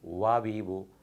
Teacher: واو کا مخرج ہے دونوں ہونٹوں کی گولائی۔ دونوں ہونٹوں کو اتنا گول کیجئے جتنا ہم یو کا تلفظ کرتے وقت ہونٹوں کی چونچ بنا کر گول کرتے ہیں، جیسے انگلش میں یو کہتے ہیں، یو۔ · جہاں ہمارے ہونٹ ٹھہرتے ہیں یہ جو گولائی ہے یہ واو کا مخرج بنتی ہے، یعنی دونوں ہونٹوں کو گول کر کے ناتمام ملانے سے واو ادا ہوتا ہے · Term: شفیہ